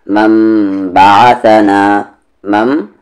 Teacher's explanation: اس ما کو یہاں با میں ملانا ہے غنے کے ساتھ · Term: اقلاب